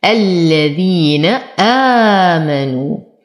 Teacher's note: ألف ساكنة ما قبلها مفتوح وقبله همز فهو بدل لورش ويمد بثلاثة أوجه 2 4 6 حركات. آمنوا، واو ساكنة ما قبلها مضموم فهو من الطبيعي حركتين.